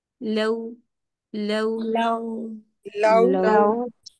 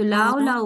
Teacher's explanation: next क्या है हमारे पास, तीसरा लेटर लाम की जबर, फिर हमारे होंठ रेक्टेंगल होंगे ल, और अब हमने होंठ गोल कर देना है